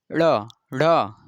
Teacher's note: जब इसे आप बोलेंगे तो जो ऊपर तालु है, जीभ के ऊपरी वाला जो ऊपरी हिस्सा है मुख का, उसे तालु बोलते हैं। जब तालु में सट करके जीभ बाहर झटके से निकलती है तो ये उत्क्षिप्त व्यंजन निकलता है